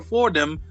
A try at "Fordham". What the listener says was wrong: Like the H is silent.